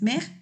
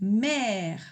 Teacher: se abre un poquito más la boca para sacar ese sonido de la eh grave